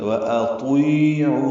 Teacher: واطیعوا میں غلطی اکثر لوگ کرتے ہیں، یہ طا نہیں پڑھتے، تا پڑھتے ہیں، واطیعوا، یہ غلط ہے۔ واطیعوا طا پر پڑھنا ہے، موٹا کرنا ہے، حروف مستعلیہ میں سے ہے۔ یا مدہ ہے، دو حرکات لمبا ہے، عو واو مدہ ہے۔